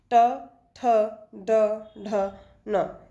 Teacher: जब जिह्वा की उल्टी हुई नोक का निचला भाग मूर्धा से स्पर्श करता है, ऐसी स्थिति में जो उत्पन्न होती है ध्वनि उसे हम क्या कहते हैं, मूर्धन्य कहते हैं। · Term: मूर्धन्य व्यंजन